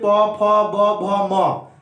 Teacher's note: ओष्ठ का उच्चारण होता है उ और पवर्ग, उ और पवर्ग, ओष्ठ से। ओष्ठ का मतलब कि दोनों ओठ सटना, जैसे पवर्ग देखिए प, जब तक दोनों सटेगा नहीं बोल पाएंगे